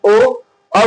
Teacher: और कंठोष्ठ उच्चारण स्थान ओ औ होता है